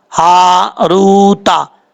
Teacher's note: ہا بھاری ساؤنڈ کے ساتھ پڑھا جائے گا.